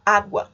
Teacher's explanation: Eu tenho U seguido de A dentro de uma mesma sílaba. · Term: ditongo